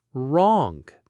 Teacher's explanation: It's wrong with those slightly rounded lips.